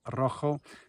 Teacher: it's got an R at the beginning. You need to roll the R a bit